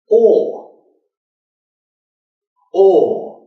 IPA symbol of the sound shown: ɔː